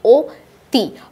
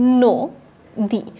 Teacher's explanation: তো আমরা যদি লক্ষ্য করি এগুলো দেখে মনে হচ্ছে যে এই সকল শব্দের স্বরে অ আছে কিন্তু উচ্চারণ করতে গেলে ঠিক কি চলে আসছে স্বরে অ স্বরে অর পরিবর্তে ও চলে আসছে উচ্চারণের সময় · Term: সংবৃত উচ্চারণ